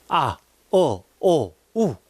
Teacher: 단몸이라는 것은 몸을 입안에서 딱 발음할 때 딱 한 군데 위치에서 나니까요. 단몸은 발음할 때 혀나 입술이 움직이지 않아. 아, 오, 우.